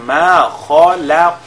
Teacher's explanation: Au niveau de ma khalaq, nous avons le kha qui est lié avec at-tafkhim, le lam il est lié avec at-tarqiq. Ensuite nous avons le qaf qui est lié avec at-tafkhim et al-qalqala en même temps